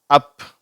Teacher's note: இந்த அ சவுண்டு வந்து கொஞ்சம் அழுத்தமானது ஆனா குறில் ஓசைதான் ஷார்ட் வவுல்தான் அது வந்து கொஞ்சம் அழுத்தமா வேகமா சொல்லப்படுகிறது